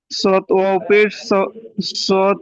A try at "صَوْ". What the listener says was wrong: পেজ না, এটা যাবার, দেখেন। সৌ, সৌমু, সৌমু। صاد ও جبر صو ميم اسم صوم।